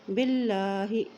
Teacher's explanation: اللہ کے نام سے پہلے زیر ہے تو اللہ کا نام باریک ادا کریں گے